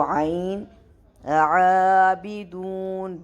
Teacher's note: تم عابدون عین کے اوپر کھڑا زبر، اس کو بھی 2 سیکنڈ تک ہم نے پل کرنا ہے. یاد رہے کہ عین کا مخرج اپنے باٹم تھروٹ سے ہی پاسبل ہے